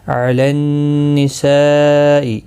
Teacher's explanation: نون مشدد پر غنہ ہوگا، یہاں پر مد متصل ہے، چار الف کی مقدار کے برابر کھینچ کر پڑھیں گے